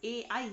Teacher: ए और आई का जो उच्चारण स्थान है वो कहाँ होता है, कंठ भी और तालु भी होता है, इसलिए इन वर्णों को कहा जाता है कंठ तालव्य वर्ण।